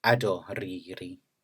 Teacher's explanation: the first foot is bimoraic, ado, and then the ri forms a second, potentially stress-bearing foot in between